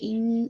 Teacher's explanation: ان most complete غنہ ہے، اکمل غنہ ہے، یہ پورا آپ کا نیزل کیویٹی میں ساؤنڈ رن کرنا چاہیے